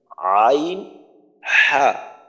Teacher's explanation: দুই নাম্বার মাখরাজ কণ্ঠনালী বা হলকের মাঝখান হইতে উচ্চারিত হয়